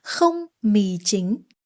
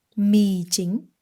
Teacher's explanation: Mì, falling tone. Chính, rising tone.